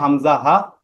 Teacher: এক নাম্বার মাখরাজ হলকের শুরু হইতে হামজা হা